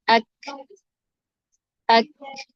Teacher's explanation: زبان اور اوپر کا تالو، وہاں سے کاف ادا ہوتا ہے